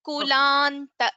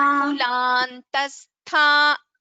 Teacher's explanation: In the second word Kulantastha Bhagini, there is a nakara after la. That nakara has to be heard. Kulanta, that should be heard.